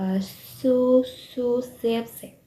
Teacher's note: For this fricative, the tip of the tongue moves up against the gum line behind your upper teeth. Voiceless. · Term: Alveolar fricatives